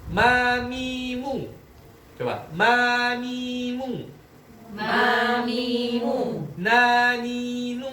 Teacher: Kemudian yang keempat, anqos. Nun dan mim berharokat. Ada gunahnya juga ternyata. Karena ini sifat asliyah dalam kondisi apapun harus ada.